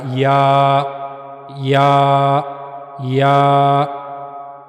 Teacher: जबान का दरमियानी हिस्सा मुंह के ऊपर वाले हिस्से की तरफ उठेगा। वहां से या अदा होगा।